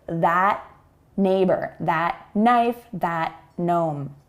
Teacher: we do not say the T sound before the N here because we have T in that and the N sound beginning the next word.